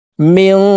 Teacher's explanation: নুন সেকেন্ডের পরে ইকফার 15টি হরফ থেকে একটি হরফ জিম আসছে, এই কারণে এই নুন সেকেন্ডকে নাকের ভিতরে লুকাইয়া গুন্নার সহিত পড়ব। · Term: ইকফা গুন্না